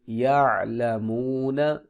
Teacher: عین کی آواز قدر نرم اور بغیر جھٹکے والی ہوتی ہے